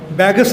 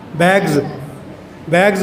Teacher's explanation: Voice sound के बाद अगर सा आएगा ज़ा बन जाएगा। बैगस नहीं होंदा, बैग्स होंदा है।